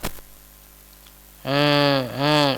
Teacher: Suara yang berasal dari hidung di sini, dari pangkal hidung itu disebut dengan gunah.